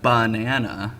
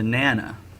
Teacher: delete unstressed syllables, which is why words like banana, where the stress is on the nana, the BA gets dropped to nana